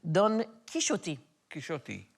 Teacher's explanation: the X is a sh, technically, because he's speaking Old Castilian in the book, and it should be Don Quixote.